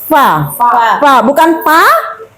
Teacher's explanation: Fa gigi seri depan disentuhkan ke bibir bawah. Fa bukan pa tapi fa.